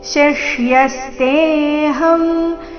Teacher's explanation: ಮೊದಲು ತಾಲವ್ಯ ಶಕಾರದೊಂದಿಗೆ ರಸ್ವ ಅದರ ನಂತರ ಮೂರ್ಧನ್ಯ ಶಕಾರದೊಂದಿಗೆ ಸಂಯುಕ್ತಾಕ್ಷರ ಬಂದಿದೆ